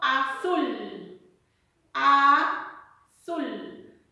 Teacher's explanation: efe o vocal por ejemplo si yo digo azul a azul donde recae la mayor fuerza de voz en la última sílaba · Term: agudas